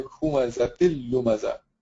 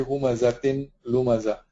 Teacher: You join them together with the case of idgham, humazatil lumaza, and there is no noon or tanween, so there is no gunna here either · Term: idgham bighayr gunna